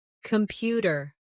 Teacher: The stress is on the second syllable. Compu tear. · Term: word stress